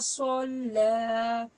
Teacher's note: صوت کو ہم پور کر کے پڑھیں گے یعنی کہ موٹا پڑھیں گے